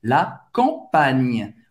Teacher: Ou seja, você não vai falar campagne, você não vai nasalizar esse A, você vai falar o A normal